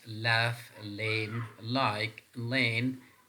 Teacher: so these sounds are lateral sounds or L sounds